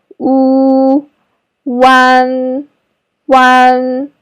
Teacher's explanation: the first sound is ooh like food but your lips should be rounder